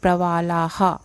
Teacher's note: ये जो विसर्ग है लास्ट में है इसलिए हा बोलेंगे। अब क्योंकि ल में आ बड़ा है तो हम हा भी बड़ा बोलेंगे